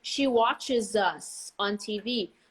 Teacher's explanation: Very clear Z sound, especially when you have a vowel right after.